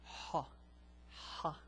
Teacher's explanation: there is a scratching sound coming from the back of the throat. It's as if you're trying to clear your throat.